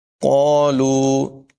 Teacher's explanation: قالوا، یہاں پر بھی قاف پر ہوگا، قاف کو اور لام کو لمبا کر کے پڑھیں گے، الف مدہ اور و مدہ ہونے کی وجہ سے